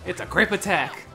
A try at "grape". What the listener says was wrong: Didn't tell, you need to enunciate the G more.